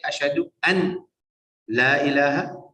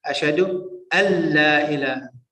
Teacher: That's a shadda. The noon goes into the lam, so you don't say Ashhadu an la ilaha.